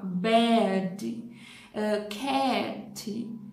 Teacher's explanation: Eles vão ter o som de E mais A. Então, E mais schwa.